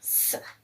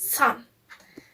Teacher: It's unvoiced because when we say s, our throat isn't vibrate. Its place of articulation is alveolar because our tip of tongue is used close to the alveolar ridge. Its manner of articulation is fricative.